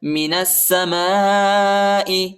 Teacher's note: نون کو سین کے ساتھ ملانا ہے، سین کے اوپر شد آیا ہے